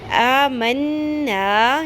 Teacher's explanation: یہاں پہ نون مشدد، نون کو غنہ کریں گے، ناک کی ہڈی میں ٹھہراتے ہوئے